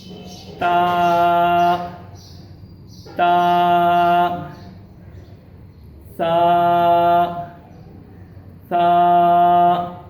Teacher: یعنی ٹھیک ہے، زبان کو میں نے دانتوں کے اوپر والے یعنی اندر کی جانب دانت کی جو اوپر حصہ ہے نا، ایسے کر کے تا تا سا سا. یعنی زبان اوپر دانتوں کے ساتھ لگ رہی ہے